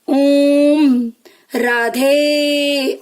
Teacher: अगर मैं राधे बोल रही हूं तो धे में हम क्या कर रहे हैं, आवाज को खींच रहे हैं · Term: प्लुत स्वर